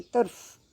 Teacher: और जब फ बोलेंगे तो ये हमारी हवा जो है मुंह की वो बाहर को होगी, हमारे होंठ टच करते करते रह जाएंगे और इनके बीच में से हवा जो है बाहर को निकलेगी। फ हवा फेंक रही है बाहर को, फ फ फ।